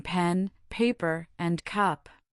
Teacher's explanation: You create this sound by pressing your lips firmly together, building up air pressure in the oral cavity, and then releasing it in a quick explosive puff of air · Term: bilabial posive P